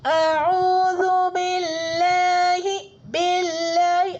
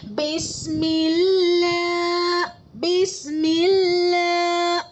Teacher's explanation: اللہ کے لام سے پہلے زیر ہے تو اللہ کے لام کو باریک پڑھیں گے